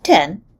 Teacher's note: In the word 10, the T is pronounced with a slight exhale. We represent it with an upper script H after the phonetic symbol for T.